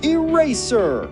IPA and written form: ɪˈreɪ.zə (Eraser)